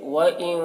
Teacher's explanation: وَإِن نون میں اخفا ہوگا، کیونکہ نون ساکن کے بعد حروف اخفا میں سے کاف ہے، تو نون میں اخفا کریں گے،